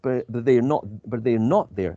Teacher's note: I would emphasize the word not, because I'm sure I put my glasses in my bag, so I expect the glasses to be in my bag, but they are not there.